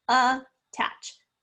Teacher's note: that is definitely the schwa sound spelled with the letter a